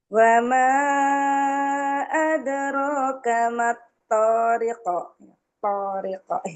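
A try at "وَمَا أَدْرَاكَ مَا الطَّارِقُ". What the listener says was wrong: Iya, belum ini kurang naik. Po, po, po, po, po.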